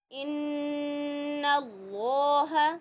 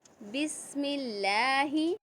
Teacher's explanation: پہلے آپ نے اللہ کے نام کو موٹا پڑھا، اب یہاں پر آپ نے باریک پڑھا